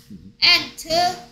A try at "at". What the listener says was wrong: At 왜 없는 니은 소리를 왜 자꾸 붙이나? 뭐 Ant야 Ant는 At